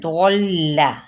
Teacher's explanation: لام تشدید کے ساتھ ہے، ضل، ٹھیک ہے، لام کو پر نہیں پڑھنا